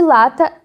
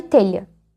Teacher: E por último, as laterais. Aqui a língua bloqueia o centro da boca, mas o ar não fica preso. Ele encontra um caminho e escapa pelos lados da língua. Por isso que o nome é lateral.